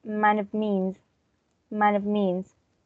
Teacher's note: we have the first vowel that changes and the second sound just disappears The V disappears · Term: reduction